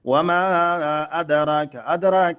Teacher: ادراک کې دال ساکن قطب جد نه راغلی نو قلقله کېږي